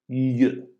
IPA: ʎ